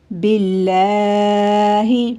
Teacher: لفظ اللہ کی لام سے پہلے زیر آ گئی ہے تو اس لیے ہم اس کو باریک پڑھیں گے